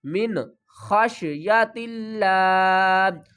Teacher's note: نون کی آواز کو ظاہر کر کے پڑھیں گے کیونکہ نون ساکن کے بعد آگے حروف ہلکی میں سے خار ہے.